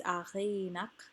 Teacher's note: Achi is the iambic foot. A is not stressed. Chi is stressed. Chi is also lengthened because it is open and not the end of a word. So it's achinak.